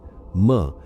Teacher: म यह होठ बंद हमिंग साउंड यह आपके पूरे स्कल को वाइब्रेट करनी चाहिए